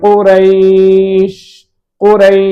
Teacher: இங்க யாவுக்கு சுக்குூன் இருக்கிறது யாவுக்கு முன்னால் ராவுக்கு பத்த இருக்கிறது இங்கு லீனுடைய தன்மை இருக்கிறது